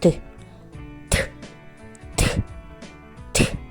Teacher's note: язичок піднімається за верхній зубки там він створює перешкоду через яку проривається звук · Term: звук т